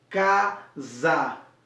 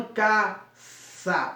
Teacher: esse S acaba sendo no fonema com som de Z, casa, e não caça